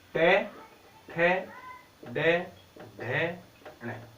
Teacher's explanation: मूर्धा भाग से बोले जाने के कारण इनको कहते हैं मूर्धन्य। मूर्धा भाग कहते हैं हमारे जो ऊपर वाले जो दांत हैं, दांतों के ऊपर हल्का सा जो खड्डा जो महसूस होता है, उस भाग को हम कहते हैं मूर्धा भाग।